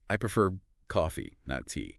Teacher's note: A little rise on the word you want to contrast, followed by a fall.